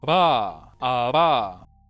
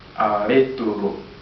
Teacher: It's a flap or a tap, meaning the tongue makes a brief contact to the place of articulation. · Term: voiced labiodental flap